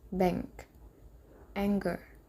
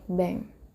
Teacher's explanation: the hmm spelling at the end of a word like Bang the letter G is not pronounced separately in such words